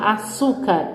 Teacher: A gente já sabe qual é a paroxítona. É a penúltima sílaba tônica forte.